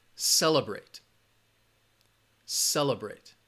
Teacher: the syllable that has the schwa sound is that second syllable